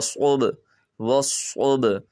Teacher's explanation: ہم صاد کو موٹا کریں گے اور با پر قلقلہ کریں گے